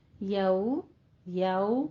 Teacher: دونوں ہونٹوں کو گول کیجئے، واولین کو خوبصورت ادا کرنا ہے، دونوں ہونٹوں کو ناتمام گول کرتے ہوئے